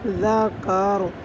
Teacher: ذال زبر ذا، کاف زبر کا، ذاکا، را زبر را، ذاکار، آگے وقف، ذاکار۔ را کو وقف کی صورت میں پر پڑھنا ہے